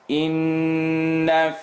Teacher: Noon shadda in the nose.